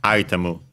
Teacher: The accent is on the first syllable, just like in English. Item, high, and everything else low.